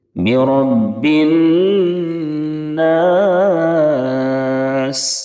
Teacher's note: نون کے اوپر تشدید ہے اس لیے نون میں ایک الف کے برابر غنہ کریں گے، ناک میں آواز جائے گی۔ برب الناس، سین کی ادائیگی میں سیٹی جیسی آواز نکلے گی، وقف کریں گے تو سین ساکن ہو جائے گی۔